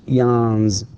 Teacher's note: And notice how I pronounce it, yawns, with z, because again, the last or the final sound in the word yawn is n, and it is voiced. Therefore, we pronounce the s with z and not s.